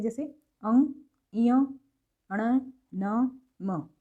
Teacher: बोल करके देखें तो नाक की हेल्प से ही बोले जाते हैं, नाक बंद करके देखो बोले नहीं जाएंगे।